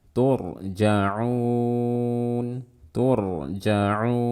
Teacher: ada ro mati sebelumnya dhammah dibaca tebal